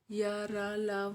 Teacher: इन वर्णों के उच्चारण के समय जिह्वा का स्पर्श मुख के किसी विशेष भाग से नहीं होता। हवा मुख अंगों में कम टकराती है और श्वास की अंतः गति कम होती है, इसलिए इसे अंतस्थ व्यंजन कहते हैं।